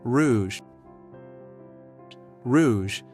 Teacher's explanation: The R comes from the back of your throat, almost like gargling. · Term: French R sound